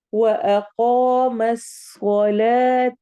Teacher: कॉफ मोटा भी करना है और लंबा भी करना है।